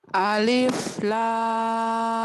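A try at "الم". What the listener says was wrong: Aja jangan ditahan. Alif. Jangan alif, alif.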